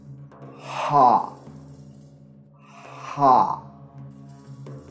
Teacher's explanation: The twisted wick is a voiceless pharyngeal fricative, and it is produced by constricting airflow through a narrow channel at the place of articulation, causing turbulence with the tongue root against the pharynx without engaging the vocal cords.